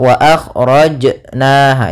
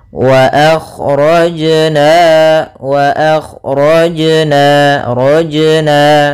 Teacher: lafal jim ada bacaan qalqalah, yaitu suara jimnya memantul